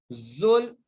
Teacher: زا جو ہے سٹی سے ادا ہونے والا ہے